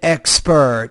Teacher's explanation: An expert put stress on the first syllable, not the second. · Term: word stress